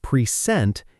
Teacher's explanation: When the stress moves to the second syllable, present, it becomes a verb.